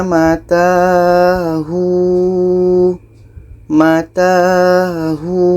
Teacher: Bunyi hu di sini menjadi panjang, dan bunyi wo hilang.